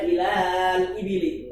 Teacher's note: Ila. Aslinya kan ila panjang. Ada mat di situ. Tapi ketemu sukun, maka dia dibuang matnya. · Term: takhallus bil hadfi